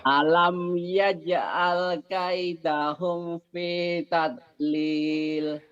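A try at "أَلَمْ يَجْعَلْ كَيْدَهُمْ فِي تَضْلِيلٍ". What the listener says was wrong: Humnya jangan kaidahum, kaidahum. Idhar. Nanti ada yang ihfaz sapawi, di sini idhar. Yang ihfaz sapawi yang nanti di sini nih. Di sini ada bindeng ya, di sini enggak.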